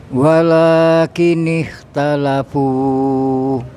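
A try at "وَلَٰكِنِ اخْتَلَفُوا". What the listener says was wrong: Panjangan Pak. Fu itu aja.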